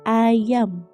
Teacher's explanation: A diucapkan dengan lidah tidak menyentuh langit-langit mulut atau datar dengan bentuk mulut tidak bulat.